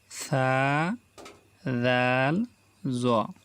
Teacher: জিহ্বার আগা সানায় উলিয়া দাঁতের আগার সঙ্গে লাগাইয়া, মানে সামনে যে আমাদের দুইটা দাঁত আছে উপরের দাঁত, ওটাকে সানায় উলিয়া দাঁত বলে। তো জিহ্বার আগা সামনের উপরের দুই দাঁতের আগার সঙ্গে লাগাইয়া সা, সা, জাল, জোয়া, এই তিনটি হরফ উচ্চারিত হয়